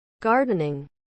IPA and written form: ˈɡɑː.dən.ɪŋ (Gardening)